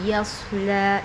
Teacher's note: یا کے بعد صاد ساکن ہے، یا کو صاد میں ملائیں گے